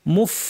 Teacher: এই ফাটায় প্রচুর আওয়াজ এবং বাতাস জারি রাখতে হবে, ফ্যাস ফ্যাসে আওয়াজ হবে